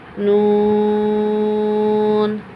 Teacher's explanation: کتنا پڑھیں گے ہم اسے؟ 6 کے مد کے برابر پڑھیں گے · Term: مد لازم